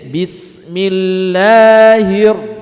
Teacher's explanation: maka ringankan takrir ketika ro bertasdid. Jadi takrirnya itu lebih tersembunyi. Jadi bismillahirrahmanirrahim, bukan hirra, enggak, tapi sembunyikan.